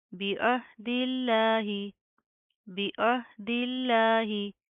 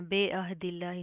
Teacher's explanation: बाज़ेर बी होता है, आपने इसको बे नहीं पढ़ना